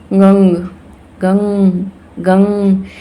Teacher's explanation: नाक से इसका प्रोनंसिएशन होता है ये जो बिंदु है यह अनुस्वार की तरह प्रयोग होता है